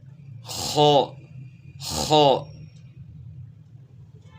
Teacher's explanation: خا کی آواز گلے کے شروع سے نکالنی ہے، جہاں سے خرخراہٹ کی آواز نکلتی ہے وہاں سے، لیکن اس کو موٹا کرنا ہے۔